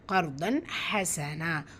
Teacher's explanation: தன்மீனுக்கு அப்புறமா ஹா வந்திருக்கு, இது ஹாருடைய சட்டம். உள்ளதை உள்ள மாதிரி ஓதணும், குன்னா செய்யக்கூடாது.